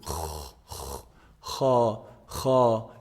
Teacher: it's pronounced from the top part of the throat